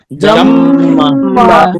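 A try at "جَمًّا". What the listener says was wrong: এখানে টান হবে, মিমের সাথে টান হবে, আমরা যদিও টানের নিয়ম পড়বো। জাম্মা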